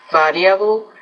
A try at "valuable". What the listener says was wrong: So you want to pronounce the word variable. Variable, the V, it almost sounds like a B for you, so variable.